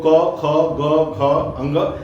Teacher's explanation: कंठ का जो स्थान है यहां से इसका उच्चारण हो रहा है। गले से हो रहा है। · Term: क वर्ग